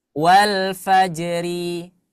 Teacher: ada Ro berharakat kasrah maka dia selalu dibaca tipis